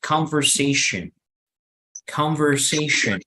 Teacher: todos, sin excepción, tienen sonido schwa, es decir, esta última sílaba, que puede ser T-I-O-N o puede ser S-I-O-N, va a pronunciarse como jen, jen.